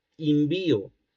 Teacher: la vacilación se da en una sílaba átona desde luego y vacilan vocales pertenecientes a una misma serie, en este caso de la serie anterior